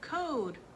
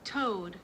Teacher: when a kid goes to say code and they're velar fronting they will be saying toad